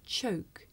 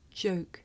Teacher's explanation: the voiceless sound that you hear at the beginning of the word choke and the voiced sound that you hear at the beginning of the word joke